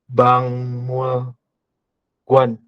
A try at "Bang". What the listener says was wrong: Ini kurang tepat ya, bukan Bang Mulguan, tapi dibacanya adalah Bang. Saya tuliskan dalam Latin ya, Bang. Ini ada giok ketemu dengan miem, berarti gioknya dibaca ang, dibacanya bang.